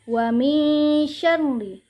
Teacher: Di sini ada huruf ro yang bertasydid, maka kita tidak boleh membacanya terlalu ditahan, maka hanya boleh sedikit ditekan karena ini bukanlah gunnah.